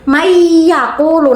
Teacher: Dari non sama ya-nya itu digabung langsung dimasukkan. Dengung ya, jangan cuma man yakulu